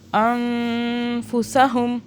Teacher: ہم نے اس سے پیچھے والا جو نون ہے اس پہ اخفا کرنا ہے، کچھ دیر کے لیے رکنا ہے نون پر